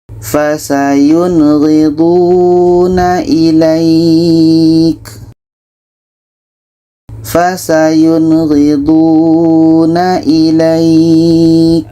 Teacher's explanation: Nun jelas, ghain jelas. Nun jelas, ghain jelas, dan tidak ada dengung. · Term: izhar halqi